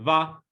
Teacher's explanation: it's very important to add the glottal stop at the at the end